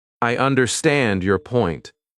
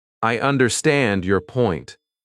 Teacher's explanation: The strong words are understand and point.